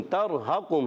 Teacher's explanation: را ساکن سے پہلے زبر آ گیا ہے، پر ہو جائے گا را، موٹا کر کے ادا کریں گے